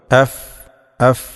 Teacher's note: രണ്ടു ചുണ്ടും ചേർത്തുകൊണ്ട് പറഞ്ഞുപോകാൻ പാടില്ല ഫ എന്ന് പറയുമ്പോൾ